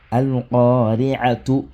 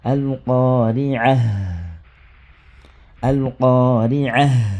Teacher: le ta marbuta est transformé en ha. Mais lorsqu'on veut passer, on n'applique plus la règle au fait de l'arrêt. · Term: l'arrêt sur le ha